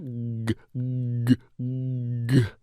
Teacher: as I introduce the g sound, I create this a little bit of back pressure. G, g, g. And then I release.